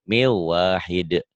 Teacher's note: Ini membahas tentang hukum nun mati atau tanwin saat bertemu dengan wawu. Ini idgham bigunah. Dimasukkan, dileburkan, disertai dengan dengung. Min jadi miu.